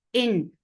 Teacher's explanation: Hamza is very sharp sound. Sharp means there is no flow of sound.